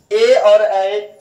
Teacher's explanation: उसके बाद देखिए ए और ऐ इसको बोलते हैं कंठ तालव्य, इसका कहां से, कंठ और तालु की सहायता से बोले जाएंगे ए और ऐ, कंठ और तालु की सहायता से ए और ऐ, कि ए और ऐ कहां बोले जाएंगे, कंठ और तालु से।